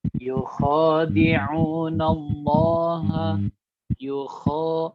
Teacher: pada huruf kho itu harus dibaca panjang 2 harokat. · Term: fathah panjang